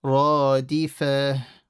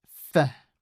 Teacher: Yeah, there's no stretch on the fa. So it's fa.